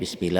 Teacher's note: lafadz Allah nya dibaca tipis tarqiq